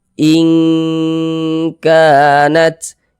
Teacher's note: Huruf nun sukun itu kita baca samar. Jangan kita baca in berbunyi n-nya itu jelas sempurna begitu, jangan.